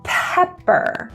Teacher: the P at the beginning is aspirated the p in the middle or P's are not